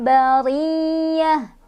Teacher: tak marbutohnya berubah jadi hak sukun ketika berhenti